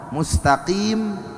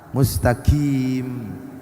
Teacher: yang seharusnya dibaca qaf, mustaqim, tapi dibaca kaf, mustaqim